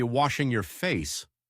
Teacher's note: The a in wash sounds like ah and face rhymes with place.